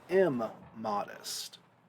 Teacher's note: Okay, we don't say it's immodest. That in is going to assimilate into the next word, and we get immodest.